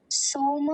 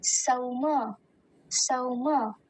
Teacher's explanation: इसमें हम औकार का ध्यान देंगे, सोम नहीं बोलेंगे, सौम, सौम। फिर अगला भाग दत्तिस।